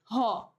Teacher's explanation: এই কারণে এটা হচ্ছে আমার না, স্বরধ্বনি না, কিন্তু বায়ু কণ্ঠনালী থেকে সরাসরি একবারে বের হয়ে আসে, এই জন্য এটাকে আমরা বলি হচ্ছে কণ্ঠনালীয় ব্যঞ্জন, আর কণ্ঠনালীয় হচ্ছে হ।